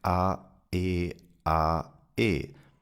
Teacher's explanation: The interruption of the breath stream by a complete closure of the vocal cords. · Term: glottle stop